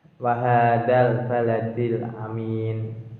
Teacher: Kemudian di kelanjutannya wahadal baladil amin, dal baladi, alnya merupakan bacaan al qamariyah karena al bertemu dengan huruf ba yaitu huruf qamariyah. Cara bacanya itu jelas